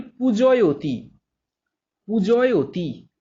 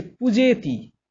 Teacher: যেমন ধরো বলি পূজয়তি, পূজয়তি, এখানে অয় এই ধ্বনিটা আসছে, তার থেকে হয়ে যাচ্ছে পূজেতি, তাহলে এ ধ্বনিতে পরিণত হচ্ছে, অয় ধ্বনিটা এ ধ্বনিতে পরিণত হচ্ছে